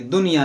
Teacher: खसिरद दुनिया वल आखिरह, यहाँ देखें दुनिया, ये जो नून साकिन है, देखें नून साकिन के बाद या है। यहाँ पर इदगाम होना चाहिए मगर यहाँ पर इदगाम नहीं बल्कि इजहार मुतलक का कायदा लगेगा